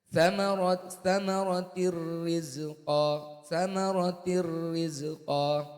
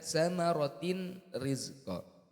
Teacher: kasratan tanwinnya dimasukkan ke rnya itu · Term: idgham